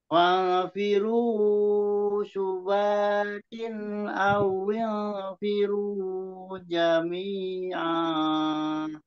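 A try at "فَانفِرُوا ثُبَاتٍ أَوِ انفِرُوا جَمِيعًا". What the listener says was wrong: Jadi di ikhfa yang pertama Pak Memen fa'firu, jadi matobi'inya jangan terlalu panjang, dibagi ke ikhfa-nya sedikit. Fa'firu subatin awil firu jami'a.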